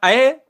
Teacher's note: अब देखो ए ये कंठ से आ रही है, और अय तो ये आपकी तालु यानी एकदम तालब्य, तालब्य से टच हो रही है, स्पर्श हो रही है वायु, तो इसलिए इस क्वेश्चन का जो आंसर है दोस्तों ए अय हमेशा कंठ तालब्य, और ओ औ हमेशा कंठ्योष्ठ या कंठ प्लस ओष्ठ बराबर कंठ्योष्ठ।